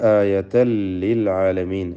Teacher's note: എന്നിട്ട് ചേർത്തോതുക ആയതൻ ലിൽ ആലമീൻ. ആയതൻ എന്ന തൻവീനിനെ ഇദ്ഗാം ബിഗൈരി ഗുന്ന അല്ലെങ്കിൽ ഇദ്ഗാം ബിലാ ഗുന്ന നൽകി ലാമിലേക്ക് പൂർണ്ണമായും ലയിപ്പിച്ച് മണിക്കാതെ ഉച്ചരിക്കുക